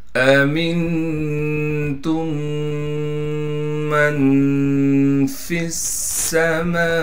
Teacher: تا کو میم سے ملانا ہے، پھر میم کو آگے ہم میم سے ملائیں گے، اس لیے کہ میم پر تشدید ہونے کی وجہ سے ملا رہے ہیں، اور پھر میم پر غنہ کریں گے